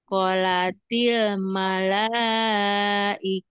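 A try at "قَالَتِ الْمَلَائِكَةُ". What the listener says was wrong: Panjangin koknya.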